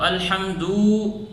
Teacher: اس پیش کو اگر کھینچ کر پڑھیں گے تو الحمدو، یہاں پر واو پیدا ہو گیا، واو بڑھ گیا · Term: زیادتی حروف